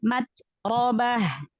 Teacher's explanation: Taknya jangan memantul, taknya hamas aja.